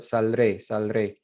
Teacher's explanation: That transition from a liquid to, not even a liquid, just a lateral to a vibrante, naturally inserts that D in there.